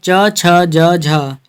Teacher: च छ ज झ ये हिंदी की तालव्य ध्वनियाँ हैं